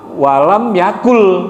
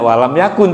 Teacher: nun mati ketemu lam itu ada idkam Bil gunah at lagi jadi nunnya melebur nunnya dihilangkan lebur ke ke huruf berikutnya lam · Jadi nunnya melebur, nunnya dihilangkan, lebur ke huruf berikutnya lam. Jadi walam yakul, tidak walam yakun, tulisannya walam yakun. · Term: idgham bila gunah